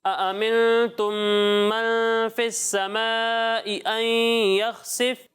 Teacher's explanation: بعض بچے ایک حمزہ کو کھا رہے ہیں تو ایسا نہیں کرنا، دونوں حمزہ واضح ہونے چاہیے